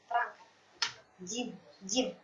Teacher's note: Jadi kita masuk dulu ke huruf yang pertama supaya Ibu tidak bingung. Jim ya, huruf jim ini tadi keluar dari tengah-tengah lidah yang terangkat